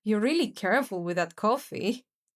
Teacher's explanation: Again, the full rise signals, I'm saying you're careful, but we both know you're the opposite.